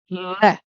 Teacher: लय बोलते समय जीभ के जो अगल बगल के भाग हैं उनसे लय निकलता है। आप बोल के देखिए, लय, जीभ ऊपर जाएगी, लय, तो लय जो निकलेगा वो जीभ के अगल बगल के भाग से निकलेगा, इसलिए लय को पार्श्विक कहते हैं। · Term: पार्श्विक व्यंजन